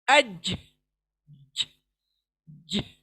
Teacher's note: जीम के पर jerk देंगे एक तरीके का छोटा। अज, ज, ज, देखें जर्क, जर्किंग साउंड।